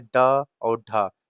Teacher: फिर हो जाता है उच्छिप्त, यानी जिनके उच्चारण में जीभ ऊपर उठकर झटके के साथ निकले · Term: उच्छिप्त व्यंजन